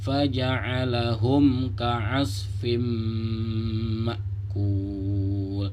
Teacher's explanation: Hukum mim sukun yaitu mim sukun bertemu kaf, maka sama dia dibaca idhar syafawi, tidak boleh dibaca dengung.